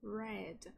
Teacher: tem dificuldade em pronunciar o som do R do inglês, que é aquele som retroflexo